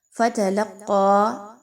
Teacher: لام اور قاف آپس میں مضبوطی کے ساتھ ملائیں گے. قاف موٹا حرف ہے، موٹا کر کے اس کو پڑھا جائے گا.